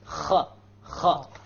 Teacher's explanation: So these are throat letters, but they are the highest part of the throat. You cannot go higher than them. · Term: ghayn and the kha